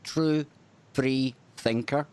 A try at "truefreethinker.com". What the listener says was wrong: it's free thinker but the way you pronounce it it sounds like three